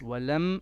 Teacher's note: we don't need to make two beats of gunna. It's walam and that's it.